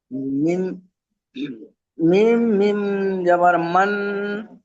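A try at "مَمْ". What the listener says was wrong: মান নয়, মাম। মাম, ডবল মিম, মিমের উপরে জাবার, তারপরে মিমের উপর সাকিন। মিম মিম জাবার মাম, মাম।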